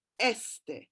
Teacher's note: So este, for example, has got the emphasis on the first syllable